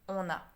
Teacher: Normally it should be on, a. But same, it's a vowel, the a, so we want to make it easier to say, and we add an n sound in between.